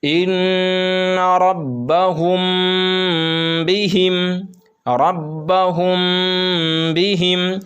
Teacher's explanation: میم ساکن کے بعد اگر با آئے تو غنہ کے ساتھ اخفا ہوگا